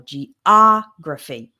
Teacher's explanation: in the word geography, the stress is on the O